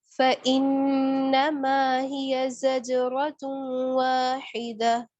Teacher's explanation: فَإِنَّمَا پہ نون مشدد کا گنہ، اس کے بعد زج جیم پہ قلقلہ.